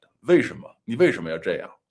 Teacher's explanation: in the north, what they do, they say 为 什 么 with like a V sort of sound